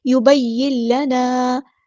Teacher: نون ساکن کے بعد لام آیا تو ہمیں پتہ ہے یہاں پہ ادغام ہوگا. ادغام بلا غنہ یعنی ادغام کامل. یبین لنا. الف مدہ آ گیا تو مد اصلی کریں گے.